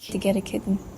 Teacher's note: the t is pronounced and each syllable is distinct since there is no t flap or glottal stop. So the vowel e shifts to e due to Malay influence. · Instead, it's usually completely dropped, resulting in kitten. The t is produced so lightly and quickly that to many ears it sounds like it is missing. And the second syllable may collapse into a syllabic n, so it feels like a 1.5 syllable word kitten. · and then in this American pronunciation, the t in kitten is not pronounced as a flap like a little because it follows by a syllabic n. Instead, it's usually completely dropped, resulting in kitten.